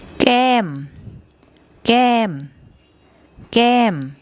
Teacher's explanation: For example, with this word, this initial consonant is a mid-class consonant, and it uses the second tone mark. And a combination of a mid-class consonant and the second tone mark results in a falling tone